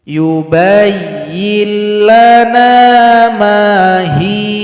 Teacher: Kemudian pada ayat 68, kalau seandainya kita berhenti pada huruf ya, maka huruf ya disukunkan, huruf ha yang sebelumnya dipanjangkan 2 ketukan. Karena berjumpa harokat kasrah dengan ya sukun, menjadi mad asli.